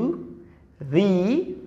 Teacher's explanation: ভি উপরের দাত এবং নিচের ঠোট ভি